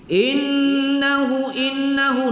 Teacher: nun bertasydid, kita baca wajibul gunnah, wajib didengungkan. Innahu hu, kita baca panjang satu alif dua harakat pada maksilah qasirah.